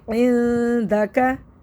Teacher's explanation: बारीक इख्फा करेंगे क्योंकि आगे दाल साकिन है, दाल बारीक हर्फ में से, तो बारीक इख्फा करेंगे